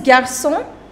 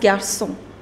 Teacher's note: So you do not pronounce the last consonant, which is S. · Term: do not pronounce that S